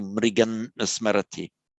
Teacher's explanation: But in pronunciation, although we'd write it the same, that subdotted M would tend to be pronounced as an N to reflect the position of the following N